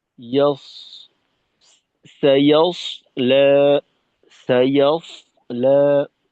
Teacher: আচ্ছা, এখানে সাইয়াস লা, সদের উচ্চারণটাকে আর একটু ভারী সাথে এই এটা তো সদের ক্ষেত্রে একটা বিশেষ বৈশিষ্ট্য হলো সফির। তো এই আওয়াজটাকে একটু উঁচু করা।